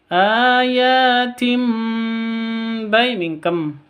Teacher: Tanwin bertemu dengan ba. Ini mengganti sifat ba menjadi mim, ya. Jadi langsung seperti idgham bi gunnah cara bacanya. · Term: iklab